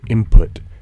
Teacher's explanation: But when I pronounce N as M before P in input, that's a partial assimilation. The two sounds are both bilabial, but one's a nasal and the other's a plosive.